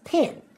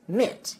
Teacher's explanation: for Southern Accents the vowel sounds I and E are pronounced the same way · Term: PIN pen merger